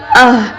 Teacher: آئیے سب سے پہلے ہم سیکھیں گے حروف ہلکیہ کا پہلا حصہ حمزہ اور ہا. حلق کے سب سے نیچے والے حصے سے ادا ہوتے ہیں جو ہمارے سینے کی طرف ہوتا ہے